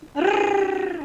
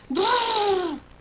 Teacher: it's like a rolled R, except you do with your lips instead of your tongue. So there's rrr with your tongue and brrr with your lips.